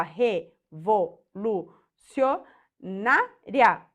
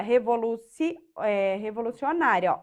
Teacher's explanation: a penúltima sílaba é mais forte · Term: paroxítona